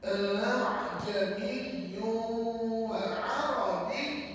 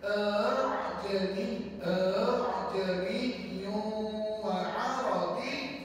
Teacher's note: hamzahnya antara alif dengan hamzah yang sebenar. Maksudnya bunyinya sama-sama. Tak berapa jelas hamzah dia. Jadi kata ulama, bacaan ni nanti bacaan seolah-olah sendawa. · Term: bacaan tashil